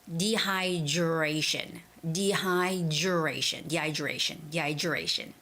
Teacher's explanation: Like most Koreans would say dehydration, duration. But when the D and the R sound are put together, it sort of sounds like the J sound. So it's got to be like dehydration, dehydration. · RA has the stress. So 1, 2, 3. It's the third syllable, stress.